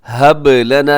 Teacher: یہاں پہ با قلقلہ ہے کیونکہ با ساکن ہے